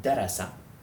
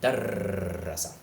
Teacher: a shadda doubles the length of the consonant on which it rests. Now that doesn't mean that we pronounce the consonant twice, just that we hold it for twice as much time.